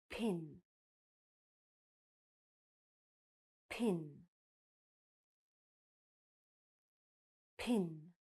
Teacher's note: are not going to use your voice no vibration in throat you're just going to push out the air with your lips no sound · it's unvoiced which means that you are not going to use your voice no vibration in throat you're just going to push out the air with your lips